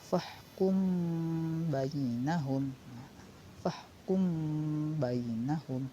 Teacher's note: Hukum bacaannya adalah ikhfa syafawi. Ikhfa syafawi ini harus didengungkan terlebih dahulu.